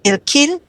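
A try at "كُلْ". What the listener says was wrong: Tidak ada i-nya, tidak ada i. Kil saja. Seperti sil.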